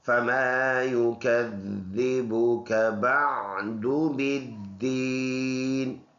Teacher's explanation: یہ اوپر کے دانت نیچے ہونٹ کے پر لگے تو اس سے فا نرمی سے ادا ہوتا ہے. یہ الف مدہ ہے، اور یہ والا یا جو ہے یہ متحرک ہے، یا پر اپنا حرکت ہے، اس حساب سے اس کو پڑھیں گے.